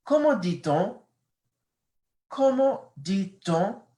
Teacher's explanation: Notice my voice, it goes up because it's a question.